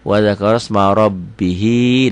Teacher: Wa dzakaros ma pendek, ro-nya tebal karena barisnya di atas, tebal tafkhim